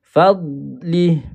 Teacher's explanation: Huruf dad jangan baca dengan qalqalah.